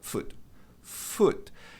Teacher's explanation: E tem um leve A no final. Então não é foot.